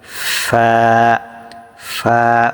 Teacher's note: নিচের ঠোঁটের পেট সামনের উপরের 2 দাঁতের আগার সঙ্গে লাগিয়ে ফা উচ্চারিত হয়। জাস্ট আপনার উপরের দাঁত 2টা নিচের ঠোঁটের উপরে রেখে দিবেন, দিয়ে মাঝখান দিয়ে বাতাস বের করবেন। ফা ফা।